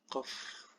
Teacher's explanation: Jadi qaf biasa beda dengan kaf ya. Qaf memang tetap dia di pangkal tenggorokan tapi dia tidak yang qaf gitu, biasa aja. Qaf. Bukan yang qaf gitu ya.